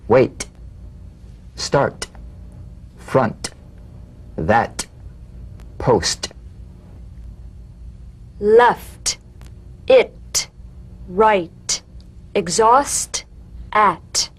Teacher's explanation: The unvoiced T, tongue front palatal stop consonant, cognate to the D. The same staccato springing action as the D drum beat, with no voice, forms the light tap of the T. Feel a gentle pulsation in the tongue.